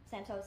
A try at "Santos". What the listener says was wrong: Santos. Santos. Long A, you said it's a short A. Santos.